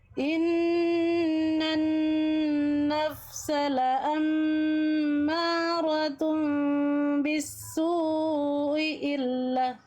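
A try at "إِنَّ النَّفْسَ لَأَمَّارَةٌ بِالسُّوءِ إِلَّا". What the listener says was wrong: Ya, kurang panjang sunya ya. Mad wajibnya. Diulang.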